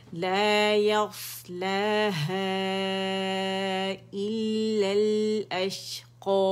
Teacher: بہت زیادہ چبا کے نہیں دینا. الا بس پتہ چلے کہ ہم نے 2 لام ادا کیے ہیں.